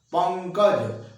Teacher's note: पंकज में नाक काम कर रहा है, मुंह की भूमिका कम रही है।